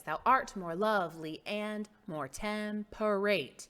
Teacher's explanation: unstressed stress unstressed stress unstressed stress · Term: iambic pentameter